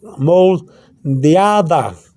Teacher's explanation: You see how I pronounce the D with a slight TH sound? Pronounce the D with a slight TH sound and add the A.